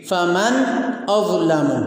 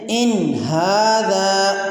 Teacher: اس میں من نون ساکن ہے اور نون ساکن کے بعد حرف حلقی میں سے حمزہ آ گیا ہے، اس لیے من پر اظہار یعنی نون ساکن کی آواز کو ظاہر کر کے پڑھیں گے۔ فمن اظلم۔